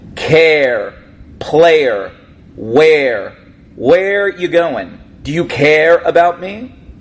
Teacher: Another example of a Northern Jersey accent, we sometimes pronounce the R at the end of our words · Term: North Jersey accent